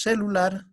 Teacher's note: Entonces, ¿dónde está la mayor fuerza de voz? En la sílaba lar.